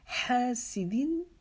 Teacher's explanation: وَمِن شَرِّ حَاسِدٍ، ہا کو ہم ایک الف کے جتنا لمبا کریں گے، ہا کی آواز کو حلق کے درمیان سے نکالیں گے، ہلکی ہا پڑھے جانے والی. سین کو باریک پڑھیں گے اور دال کو بھی باریک پڑھیں گے.